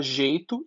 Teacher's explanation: Esse ditongo é decrescente, formado por vogal mais semivogal. Ditongos decrescentes são ditongos estáveis.